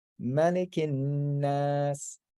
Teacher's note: because it's the end of the sentence, you can drop that last short vowel